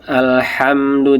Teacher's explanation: Jadi alham jangan jangan panjang-panjang cukup pendek saja